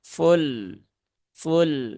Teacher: mantul ya maka perlu diperhatikan ya bukan fulek ya tetapi dia ditunaikan dulu sifat dari lam yaitu tawasud dari lam